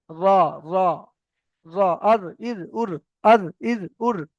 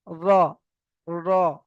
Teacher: জিভের আগার উল্টো পিঠ অর্থাৎ জিভের নিচের পিঠটা গিয়ে উপরের তালুর সঙ্গে লাগবে, মানে জিভটা ঘুরে গিয়ে উপরের সঙ্গে লাগবে।